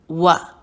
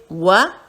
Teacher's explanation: ہونٹوں کو گول کیا پھر واپس کھول دیا، و، آواز کو چھوٹا رکھا۔